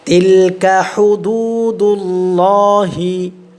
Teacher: আল্লাহ শব্দের লামটা মোটা হবে, ঠিক আছে, কি হবে, মোটা হবে।